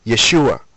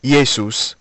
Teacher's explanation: in the Greek the sh sound of the letter Shin doesn't exist so the natural replacement for the shin is the s